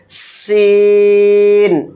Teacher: اس کا ساؤنڈ بالکل باریک سیٹی کے ساتھ ہے